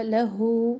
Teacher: हा के ऊपर उल्टा पेश, वाव मद्दा के कायम मकाम, एक अलिफ के बराबर, इसको लम्बा करे